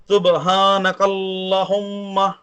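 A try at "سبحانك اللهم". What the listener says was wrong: نہیں، کلہم تو ہے ہی نہیں.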